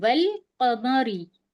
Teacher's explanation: یہ جو الف ہے ہم نے چھوڑ دیا ہے، ہم نے واو کو لام سے ملا کر پڑھا ہے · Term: حرف قمری